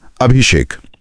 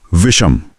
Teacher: जब हम इ या उ बोलते हैं तो हमारी जबान पहले ही तालू की तरफ उठी होती है। वहां से दांतों वाले स के लिए नीचे आने के बजाय पास में ही स्थित मूर्धा से श बोलना ज्यादा स्वाभाविक और आसान होता है। · स बदलकर श यानी मूर्धन्य श हो जाता है।